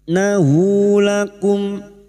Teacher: Nahu lakum mim sukun bertemu ain idhar syafawi. Mim sukun dibaca jelas tanpa mendengung.